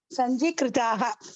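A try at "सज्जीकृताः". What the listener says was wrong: Sanji, no? Sajji only.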